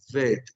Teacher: la vet, que es labio dental